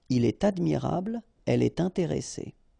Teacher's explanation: you should make the liaison, and in that case it's with T